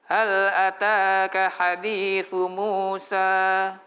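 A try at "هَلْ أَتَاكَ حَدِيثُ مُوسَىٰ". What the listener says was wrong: Hal ataka, ha. Pakai ha ya.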